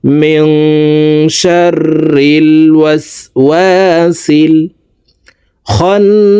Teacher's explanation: মিং, এখানে ইকফা গুন্না, নুন সেকেন্ডের পর ইকফার 15টি হরফের ভিতরে একটি হরফ শিন আসছে, এই কারণে এই নুন সেকেন্ডকে নাকের ভিতরে লুকাইয়া গুন্নার সহিত পড়ব।